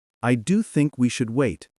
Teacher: Americans often lift slightly at the key word and land with a gentle drop at the end of a statement. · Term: Intonation